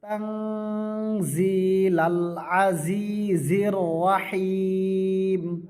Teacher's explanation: তাং নাকের ভিতরে গুন্নাহ করিবে। তানজিলাল আজিজির রহিম।